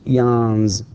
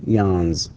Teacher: And notice how I pronounce it, yawns with z, because again, the last or the final sound in the word yawn is n, and it is voiced. Therefore, we pronounce the s with z and not s.